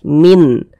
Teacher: Karena dia izhar, maka dibaca jelas, tidak berdengung. Bunyi nunnya dibaca jelas, n-nya tuh dibaca jelas